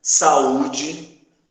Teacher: Uma vogal fica numa sílaba, a outra vogal fica sozinha, formando uma sílaba. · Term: hiato